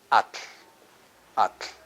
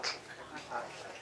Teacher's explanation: You pronounce the T and release the L at the sides of the tongue.